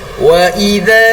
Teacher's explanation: huruf zal disebabkan ada kehadiran alif mad asli, harus baca dengan kadar bacaan 2 harakat